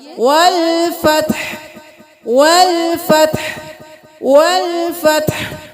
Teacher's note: ہا کو گلے کے بالکل درمیان سے · جب ہا پہ ہم ساکن کریں گے، وقف کریں گے تو ساکن ہو جائے گا، تو ہا کی آواز بالکل صاف آنی چاہیے